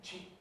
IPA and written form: ʧiːk (cheek)